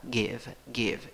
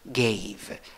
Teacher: En el presente es con i corta, give, give. En el pasado con a con sombrero, ey, gave.